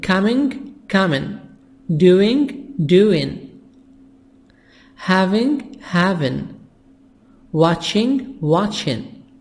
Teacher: When I have ing in speaking, in conversation, we make it without G. We make the G silent.